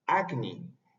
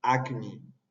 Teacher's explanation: palabra acni ese a es una a bien abierta acni y ese K es sin aspiración suena igual que nuestro fonema en español